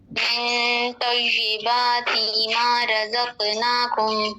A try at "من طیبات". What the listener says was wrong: من طیباتی لمبا نہیں کریں گے، تی طیباتی،